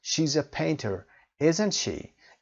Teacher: the tag question is said with Rising intonation as in a normal yes or no question